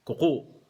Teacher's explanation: hindi long vowel yung first syllable, pero merong glottal stop sa last syllable